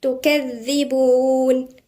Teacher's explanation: والذال هنا مشددة ومن الحروف اللثوية